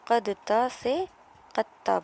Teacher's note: یہاں پر قاف اور دال پر جزم ہے قد، اور تا پر تشدید کے ساتھ زبر ہے تو قد تا سے قطا بنا۔ تا اور دال دونوں مخرج ایک ہے، اس لیے ادغام متجانسین ہو گیا